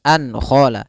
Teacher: nun sukun bertemu dengan kha. Maka harusnya suaranya harus jelas, suara nunnya harus jelas. An khala. Tidak boleh an ditahan dengan gunnah, tidak, tapi langsung jelas dan tidak ditahan. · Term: halqi